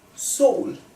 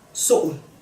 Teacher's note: You can hear it also has the glottal stop.